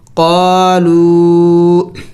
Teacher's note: واو مد ہے اور اس کے ساتھ چھوٹا مد بھی ہے، تو اس کو ابھی تھوڑا سا اور بھی زیادہ لمبا کرنا ہوگا۔ قالو، اس الف کو نہیں پڑھیں گے۔